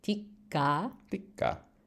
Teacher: And you get that geminate K